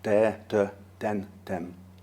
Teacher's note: the voiced th sound may be pronounced with a duh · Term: th stopping, TH stopping